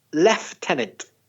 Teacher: The logical kind of pronunciation, the logical one is lieutenant. But some British people say lieutenant with a F sound in the middle